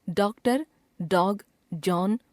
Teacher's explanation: यह चिन्ह आ तथा औ के बीच की ध्वनि सूचित करता है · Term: अर्धचंद्र